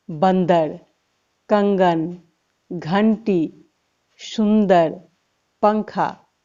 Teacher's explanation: इसे बोलने में ध्वनि नाक से निकलती है। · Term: अनुस्वार